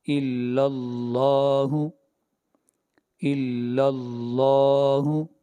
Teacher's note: لفظ اللہ سے پہلے فتح آ رہی ہے، زبر آ رہی ہے، اس لیے لفظ اللہ کو موٹا پڑھیں گے